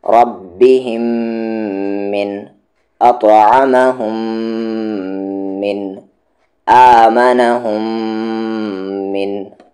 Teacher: اب یہاں پر میم ساکن کے بعد میم آ گیا تو یعنی ادغام شفوی غنے کے ساتھ.